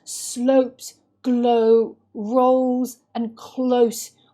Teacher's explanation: there's a moaning sound that comes through in this ricocheting O vowel in slopes, glow, rolls, close